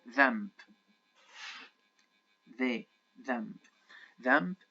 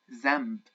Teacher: in the Egyptian dialect we do not say them we say Z instead of the the not not uh putting your tongue outside